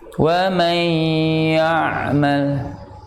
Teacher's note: huruf ain ini makhrajnya adalah tenggorokan bagian tengah